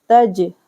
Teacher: जीम पर साकिन है तो यहाँ पर कलकला करेंगे